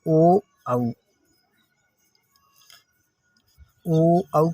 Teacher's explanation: ओ औ को बोलते हुए पहले तो उच्चारण कंठ के माध्यम से होता है, फिर उसके बाद ओष्ठ के माध्यम से होता है। इसलिए ओ औ को बोलने में या ओ औ का उच्चारण करने हमारा कंठ और ओष्ठ दोनों पर जोर लगता है या दोनों से जोर लगता है। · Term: कंठोष्ठ